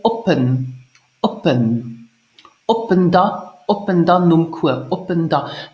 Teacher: the b of op in spoken Luxembourgish sounds like a p